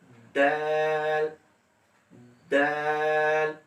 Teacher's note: জিহ্বার আগা সামনের উপরের দুই দাঁতের গোড়ার সঙ্গে লাগবে, অর্থাৎ গোড়া যেদিকে ওদিকে জিহ্বার আগাটা যদি লাগাই দেন তাহলে দালটা উচ্চারণে সহজ হবে, অর্থাৎ দাল দাল উপর থেকে।